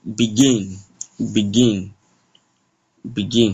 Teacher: From the way I'm sounding, you can see there is more vibration, more force to the GIN compared to B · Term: stress